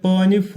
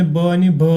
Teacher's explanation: प आणि फ हे कठोर व्यंजने असतात मृदू व्यंजने ब आणि भ असतात